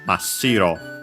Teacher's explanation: Here we can keep it pure, as in pure, white, because yeah, shiro means white, on its own accented on the first syllable. And lucky, even with the addition of this prefix, the accent stays on the shi, so Mashiro.